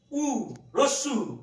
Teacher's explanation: জিভটা একেবারে টপে রয়েছে মুখবিবরের ভিতরে একদম উঁচুতে।